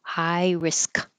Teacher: the tongue stops in the K position